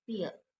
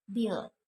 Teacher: sound pa in the word pill, it's called voiceless. And as in sound ba in the word bill, it's called voiced.